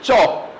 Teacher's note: चौ बोलने में बेटा पहले आपकी जीभ कहां टच होगी? तालुक में अवरोध पैदा होगा